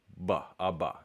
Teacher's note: So a voiced bilabial stop would be like ba, a ba.